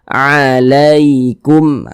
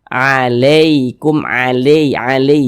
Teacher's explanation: tidak memberatkan lisan dilunakkan saja kita baca alaikum begitu akan tetapi berhati-hati ketika mengucapkan huruf Lin yang terjadi pada huruf Ya Sukun jangan sampai condong ke huruf e jangan jangan dibaca alaikum alai Ali jangan nah kita lunakkan alaikum